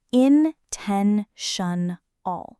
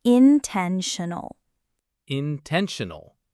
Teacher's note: Intentional is in-ten-tion-al. The stress is on the second syllable again. Ten is the part that carries the weight.